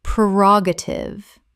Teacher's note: ubiquitous ubiquitous Word 256 prerogative common mispronunciation prerogative correct pronunciation prerogative four syllables with the stress on the second The first syllable is pre, not per.